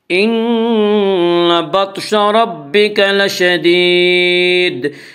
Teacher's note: لشدید پر جب ہم وقف کریں گے تو دال ساکن ہو جائے گا، اور دال ساکن ہونے کی صورت میں دال میں قلقلہ ہوگا